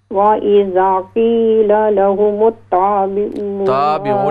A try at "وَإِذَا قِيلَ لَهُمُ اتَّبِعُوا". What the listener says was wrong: نہیں ہے تا کو کھینچے نہیں آپ تا کو لمبا نہ کریں وَإِذَا قِيلَ لَهُمُ اتَّبِعُوا